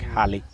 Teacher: Then the next sound is the aspirated sound h. That's the H sound.